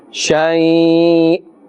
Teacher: since we are ending with the hamza and it has a kasratain, then a slight jerking sound must be made.